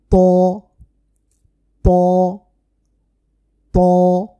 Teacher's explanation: ত হরফটি অনেক মোটা করে উচ্চারণ করতে হবে। ত ত ত এইভাবে।